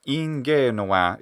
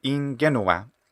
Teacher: Ingenua is what I'm hearing, a longer e, whereas it should be ingenua, a shorter e vowel sound.